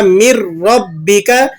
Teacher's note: یہاں پر آپ ادغام تو کریں گے لیکن بغیر غنے کے، اس کو ادغام تام بھی کہا جاتا ہے